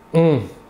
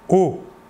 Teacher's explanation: Alors que pour le O, qui n'est pas nasal, vous ne sentirez pas d'air passer sur votre doigt. O. L'air sortira entièrement par la bouche.